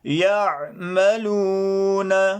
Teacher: یا کو ادا کرتے وقت جیم اور شین سے تھوڑا سا زیادہ فاصلہ رکھ کر یا کو ادا کیا جاتا ہے